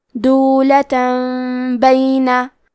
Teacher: قلب کا معنی ہے بدل دینا، تو ہم تنوین کو ہلکی می میں بدل کے اور غنہ کے ساتھ یہ حکم کو ادا کریں گے